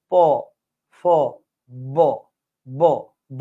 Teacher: ঠোটের মধ্যে এখানে বাতাসটা এসে জমাট বদ্ধ হয়ে পরে ধুম করে বের হয়ে যায়।